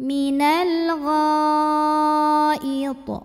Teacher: Mad tabi'inya alif didahului baris fathah, kemudian hamzahnya yang i terdapat pada kata yang sama al-ghaid. Maka ghainnya dipanjangkan boleh 4 boleh 5 harokat, tidak boleh 2. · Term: mad wajib muttasil